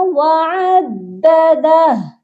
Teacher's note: اینڈ پر جو ہے نا الٹا پیش ہا کے اوپر، اکثر لوگ یہاں پر غلطی یہ کرتے ہیں وعددہ، اس ہو کو نہیں پڑھنا. اگر ہم وقف کریں گے تو صرف ہا کو ساکن کریں گے. یہاں پر پڑھا جائے گا وعددہ.